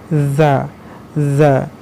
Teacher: Sementara huruf za itu tempat keluarnya di gigi seri bagian atas